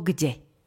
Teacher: Neznelá párová spoluhláska k sa pri stretnutí so znelou párovou d mení na znelú párovú spoluhlásku g. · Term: spodobovanie